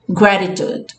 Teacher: O D não, eu falei, o T, desculpa. O T seja transformado numa coisinha mais próxima do D, ok? · Então pode ser que possa estar acontecendo com você, mas é como se fosse um Dzinho. Se você for prestar atenção com muito carinho, é alguma coisa entre um D e um R.